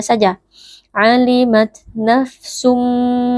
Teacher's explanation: tanwin berjumpa dengan huruf mim hukumnya adalah idgham bunah cara membacanya bunyi tanwin atau bunyi nun sukun yang ada pada tanwin kita masukkan atau kita leburkan ke dalam huruf mim sehingga Nun sukunnya ini tidak lagi kedengaran kecuali hanya dengungnya sajaimat nafsumma kemudian di sini wajib kita baca dengan berdengung Ma